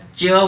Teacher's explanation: च को जब आप बोलेंगे तो हमारे तालु से टच होता है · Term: च वर्ण